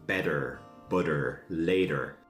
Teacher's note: The T sound. Sometimes Irish people say it like a D, similar to American.